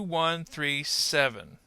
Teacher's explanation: we might want to fall a little bit at the end there